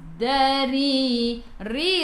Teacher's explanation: ra baris bawah kena baca dengan nipis